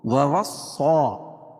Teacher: صاد کو پور پڑھیں گے کیونکہ حروف مستعلیہ میں سے